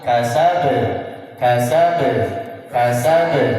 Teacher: kalau ayat kedua qalqalahnya tidak perlu ditahan karena tidak ada tasdid. Jadi langsung kasab, kasab, kasab.